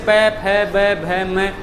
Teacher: ओष्ठ ध्वनियों में दोनों जो होठ हैं वो परस्पर स्पर्श करते हैं